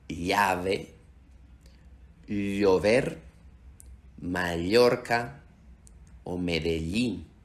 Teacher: esta pronunciación se parece un poco a decir li, pero combinar el sonido de la L y la I en un solo sonido